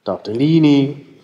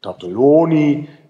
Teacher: dass Diminutiva geschlossene Vokale beinhalten und Augmentativa offene Vokale